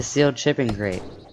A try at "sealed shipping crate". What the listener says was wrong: A sealed shipping crate. It sounded like chipping.